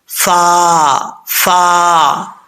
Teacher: फा को अक्सर लोग पढ़ते हुए मिस्टेक कर जाते हैं होठ गोल कर जाते हैं ऐसा नहीं करना